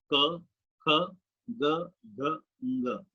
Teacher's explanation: कंठव्य कहते हैं इन्हें, इसका उच्चारण कंठ से हो रहा है,